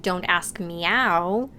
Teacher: if you link the words me and how, they might sound like meow in the Australian accent